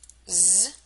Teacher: place your hand on your voice box no vibration we do if we say Z now we can hear the vibration